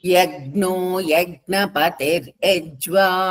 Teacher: యజ్ఞ అజ్ఞ అనే లెటర్ బాగా ఎక్కువసార్లు రిపీట్ అయిందమ్మ అది కొంచెం నాజల్ సౌండ్ ముక్కుతో పలకాలి